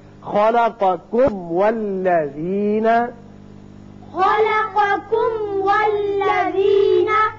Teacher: میم کا اچھی طرح اظہار کیجئے، پھر واو پر ہونٹ کو گول کیجئے، اس لیے واو ادا ہوگا۔